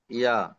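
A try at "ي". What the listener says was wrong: ইয়া একালিপ টান দিয়ে বলেন, একালিপ হচ্ছে না, একটু কম।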